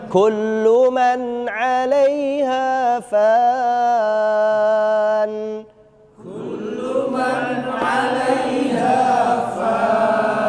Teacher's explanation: Jadi kaf itu harus keluar hamasnya karena bersamanya sifatnya itu pasti mengalir.